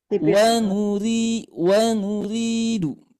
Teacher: ketika ada huruf ro yang diberikan harkat kasrah ini bunyinya tipis. Wa nuridu, tidak wa nurid ya, tidak. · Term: ro kasrah